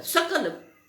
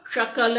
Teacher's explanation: लेकिन स जो है दंत्य स है, लेकिन दंत्य स की जगह पर आपने तालव्य श बोल दिया